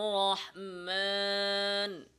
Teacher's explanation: আলিফের উচ্চারণের সাথে গুন্নার মিশ্রণ ঘটানো যেমন আর রহমান নাকে নিয়ে যাওয়া একটা ভুলটা বললাম স্পষ্ট করে